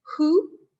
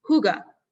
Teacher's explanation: you purse your lips and it's like who and then the second syllable the ga is almost non-existent